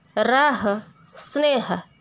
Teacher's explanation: ह सघोष है, पर शब्द के अंत में सामान्य रूप से इसका अघोष उच्चारण हो जाता है